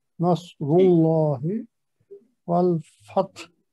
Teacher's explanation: را کو موٹا پڑھیں گے تو پھر اللہ کا لام بھی موٹا پڑا جائے گا